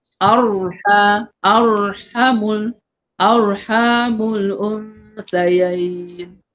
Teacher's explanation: bila tebal roh tu lidah tu tegang. Lidah tu terus tegang ke betul-betul ke langit.